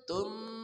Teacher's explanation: idgham bi ghunah tanwin bertemu mim dibaca dengung